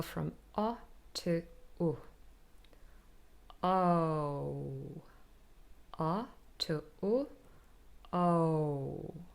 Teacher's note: we glide from one sound to the next, so they really become a new sound with movement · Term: diphthong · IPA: /əʊ/